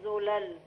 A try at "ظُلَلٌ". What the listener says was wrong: لا، هي ظاء مش ذال، ظلل.